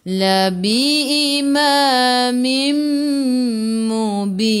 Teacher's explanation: Sebelum huruf akhir ada ya yang tak ada baris mad arid li sukun, boleh baca 2, 4 atau 6 harakat. Matikan dengan huruf nun, hujung lidah menyentuh gusi atas. · Tanwin tak sama bertemu dengan mim, di atasnya ada sabdu idgham ma'al gunnah masuk bersama dengung.